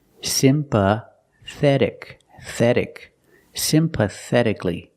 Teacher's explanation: with c-a-l-l-y the a is silent so it's pronounced CLE sympathetically that t is between vowels so it's pronounced like a fast D simpatic pathetic sympathetically the th is the soft sound like think · The T is between vowels, so it's pronounced like a fast D.